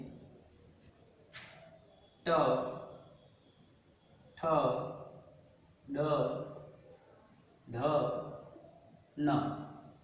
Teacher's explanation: इसका उच्चारण स्थान मूर्धा से है, और इसीलिए इसको मूर्धन्य व्यंजन कहते हैं। मूर्धा, मूर्धा, और इसको कहते हैं मूर्धन्य व्यंजन।